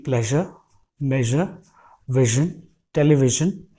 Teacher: सो ये साउंड हम तब प्रोड्यूस करते हैं, हम अपने जीभ को और ऊपर लेके जाते हैं अपर पैले की तरफ, अपर टूथ रिज की तरफ, और वहाँ पे ले जाके टच करते हैं अपर टूथ रिज पे अपने टिप ऑफ द टंग को, और फिर वहाँ से एयर फ्लो होता है.